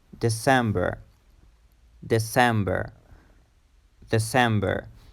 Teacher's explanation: the stress is in the second syllable